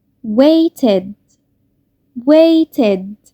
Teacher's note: The verb wait ends in t sound. When we add ed to this verb, The ED make the sound id.